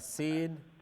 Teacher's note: सीन ज़बान की नोक सुनाया उलिया और सुनाया सुफला के साथ पुश करने से अदा होता है